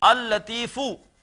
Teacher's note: مثال کے طور پر جیسے ہے لطیف، اللہ کا ایک نام ہے لطیفن، جب اس پر ال لگائیں گے تو یہ ہو جائے گا، دو لام لکھے جائیں گے، اللطیفو، پڑھا ایک ہی لام جائے گا، ادغام ہو جائے گا، لیکن لکھا جائے گا اللطیفو۔